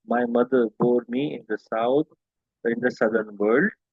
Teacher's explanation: Most of the lines in the Little Black Boy are written in iambic pentameter. This means each line has 5 iambs, metrical feet with an unstressed stressed syllable pattern. Okay, unstressed plus stressed syllable pattern with dadam dadam.